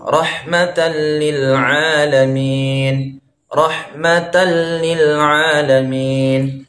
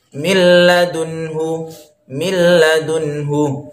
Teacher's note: hukumnya adalah hukum Idgham Bilaghunnah artinya tidak boleh didengungkan